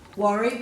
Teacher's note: there's no air after the W